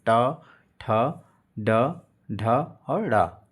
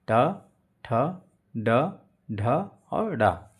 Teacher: मूर्धन्य व्यंजन अर्थात मूर्धा व्यंजन जो मुंह के भीतर की ऊपरी छत का पिछला भाग